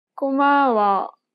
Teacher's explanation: She kept the same pitch for the first and second syllable, but lowered the tone for the last syllable.